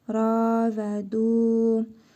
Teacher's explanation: Ra vav hərfi və bu dəl hərfidir. Və burada hərfi məd var. Bir əlif miqdarı uzadırıq. Ra və du. Hə zamiri özündən əvvəl hərfi məd gəldiyinə görə qısa şəkildə oxunur.